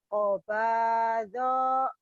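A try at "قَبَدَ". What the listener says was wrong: Qobada. Donya pendek ulang.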